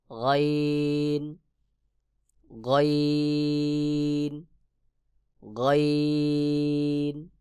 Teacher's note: হলকের শেষ হইতে কণ্ঠনের শেষ হইতে গাইন উচ্চারণ হবে